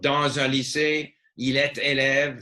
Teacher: the end of one word is dragged into the next word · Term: liaison